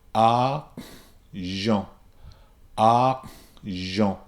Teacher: a pure a sound followed by a closing down and a redirecting of air and then followed by Jean